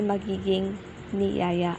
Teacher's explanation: ang i at ang n ay magkakapalit ng posisyon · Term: metatesis